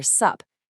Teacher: sup which of course is literally just what's up smooshed into one syllable